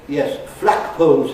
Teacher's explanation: And they say, yes, /ˋflækpəʊlz/ instead of / ˋflægpəʊlz / <flagpoles>, that type of thing.